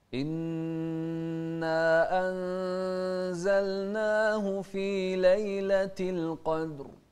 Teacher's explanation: الهمزة إنا وضح الكسر فيها وبعدها النون المشددة